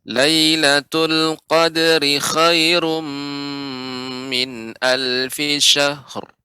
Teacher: untuk qadari tadi terasa panjang Nenek. Seharusnya pendek.